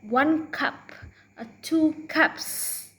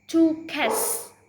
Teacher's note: one if the last cell in a word is unvoiced and you're adding an s then the s is unvoiced too